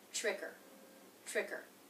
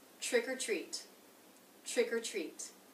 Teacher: I'm reducing the word or there to just the schwa R sound